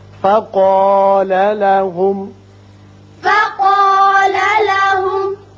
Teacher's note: قاف الف پر پڑھیں گے، میم پر اظہار ہوگا.